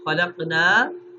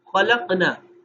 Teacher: इसको लंबा ना करें, ना को मुख्तसर पढ़ दें